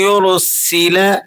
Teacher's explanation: را پیش را کو آپ نے موٹا کر کے پڑھنا ہے۔